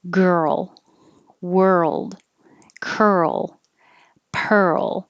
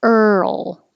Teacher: So your tongue goes to the R position and then you move it to the L position. And while you make that movement, you keep making voicing.